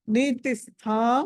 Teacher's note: దండ నీ తిస్థా, నీతిస్థా స థ అన్నది మహాప్రాణం ఒత్తి పలకాలి.